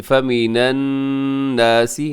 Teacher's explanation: फ़मिनन नासी नून मुशद्दद है, यहाँ गुन्ना कीजिएगा